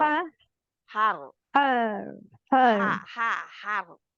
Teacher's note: पहले हा हा पे जाए, हा बारीक करे, जबड़ा नीचे जाए, स्माइली फेस हो, और फिर र के ऊपर मोटा कर दे।